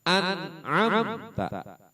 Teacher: Hukum izhar, cara bacanya jelas. Belum digabungkan atau dimasukkan atau didengung, nggak boleh didengungin, nggak boleh dimasukin.